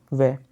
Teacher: वै को जब आप बोलोगे तो आप इसमें दंत का भी यूज़ होगा, दांतों का भी यूज़ होगा और होठों का भी यूज़ होगा। बिना इनमें से किसी एक की भी बिना सहायता के आप वै को नहीं बोल पाओगे। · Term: दंतोष्ठ